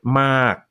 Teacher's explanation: So if I say the word mark with a K at the end, my glottis closes right where the K is.